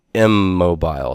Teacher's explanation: consonant that it's next to and so it becomes a mobile so we have full assimilation of the N to the M next to it